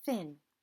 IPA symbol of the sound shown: θ